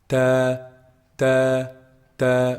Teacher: Ta is actually pronounced from the top part of the tip of the tongue. The top part of the tip of the tongue when it hits the roots of the upper front incisors.